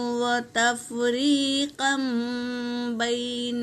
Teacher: تنوین کی آواز کو میم میں بدلیں گے، نون کی آواز کو میم میں بدلیں گے۔ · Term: اقلاب